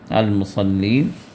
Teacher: اب یہاں فویل للمصلین میں صاد ہے، صاد کو پر کر کے ادا کرنا ہے، للمصلین نہیں ہے، سین سے نہیں ادا کرنا ہے، صاد سے اس کو ادا کرنا ہے